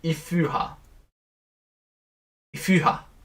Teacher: It takes its labialization and rounds the preceding vowel. So it's allophonic. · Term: allophonic u